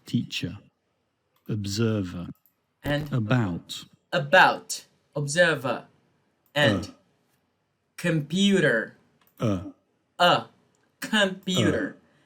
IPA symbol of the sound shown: ə